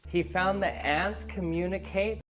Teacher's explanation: the conjunction that ending in a glottal T